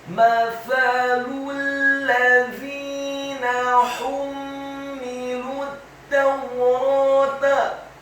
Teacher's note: huruf ha-nya dibaca tipis, tarqiq, nyaring dan halus, dhammah satu harokat. Kemudian huruf mimnya ditasydidkan dengan gunnah atau dengung seperti mat atau panjang dua harokat.